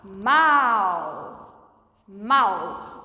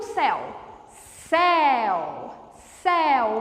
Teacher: O som passou completamente e unicamente pela boca. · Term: ditongo oral